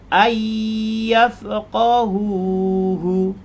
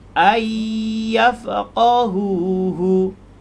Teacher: Jadi ada nun bertemu dengan ya, kita bacanya menjadi ayyafqahuhu. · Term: idgham ma'al ghunnah